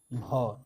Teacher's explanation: हिंदी की स्पर्श घोष महाप्राण ओष्ठ व्यंजन कौन सा है?